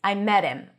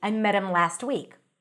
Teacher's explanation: Now the word him is pronounced as im.